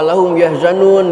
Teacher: Mim mati ketemu wau yang kedua wum yahzanun mati ketemu ya dua-duanya izhar syafawi jangan diikfakkan jangan ditahan